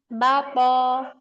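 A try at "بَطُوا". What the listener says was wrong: To-nya pendek.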